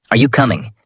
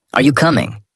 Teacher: Voice rises at the end.